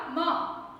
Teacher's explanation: म तो दोनों होठ हमारे मिलते हैं